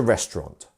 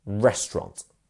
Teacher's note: we have a first syllable stress, which is restaurant